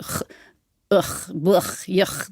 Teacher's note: that was a ch sound, this kind of back of the throat, ch, ugh, bluch, yuch.